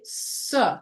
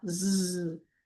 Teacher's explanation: Like the difference between s and z. When you say s, you don't feel the vibration. Now, z, you feel more vibration.